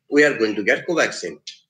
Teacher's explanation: When the pitch of the voice falls at the end of the sentence, so falling intonation is used something like in common statements.